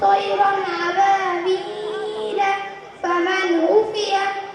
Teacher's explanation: নুন সাকিন কিংবা তানবিনের পর হুরুফে হালকি 6টি অক্ষর হামজা আইন ও ইক কফ এর মধ্যে যদি কোনো অক্ষর আসে তাহলে নুন সাকিন কিংবা তানবিনকে বিনা হুন্নায় স্পষ্ট করে পড়তে হবে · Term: ইজহার